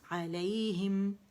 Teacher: میم پہ جا کے دونوں ہونٹوں کا اکٹھا کر لیں گے, ملا لیں گے 1 کاؤنٹ کے لیے